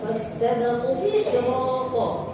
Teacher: Nah, ini sirata shadnya harus tebal